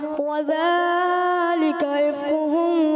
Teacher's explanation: وَذَلِكَ کا جو کھڑی حرکات ہے یہ کچھ زیادہ دراز کی ہے